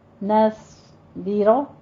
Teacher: نون باریک رکھنا ہے، صاد کو پر پڑھنا ہے اور را کو پر پڑھنا ہے، نصبر، یہ جو ایک حرف باریک ایک پر آ جاتا ہے نا، اس میں تھوڑی پریکٹس زیادہ کیا کریں۔